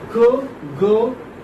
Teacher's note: k is voiceless, ga is voiced